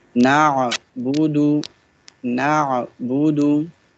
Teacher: Ain will be pronounced from the middle part of the throat.